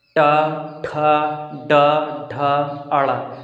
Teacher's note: अब मूर्धन्य का मतलब क्या है कि जीभ को मोड़ना पड़ता है, यानी कि इनका उच्चारण करने के लिए हमें अपने जीभ को मोड़ना पड़ता है। जैसे देखिए, टा ठा डा ढा अड़ा, तो हम अपने जीभ को मोड़ रहे हैं।